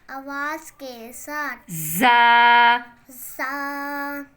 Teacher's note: زبان کی نوک سے اوپر نیچے کے اگلے دونوں دانتوں کو آپس میں ملا کر ادا ہوتا ہے. سیٹی کی آواز کے ساتھ.